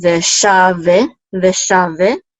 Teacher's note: this is a long vowel, so we're going to sound the shava. It's not going to be silent.